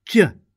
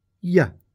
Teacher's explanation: J involves pressure, the tongue pressing firmly against the top of your mouth and coming away sharply, releasing a sudden burst of air. While y is formed with a gentler, gliding action.